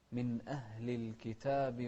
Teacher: همزة أتى قبلها النون الساكنة وإذن الحكم هني إظهار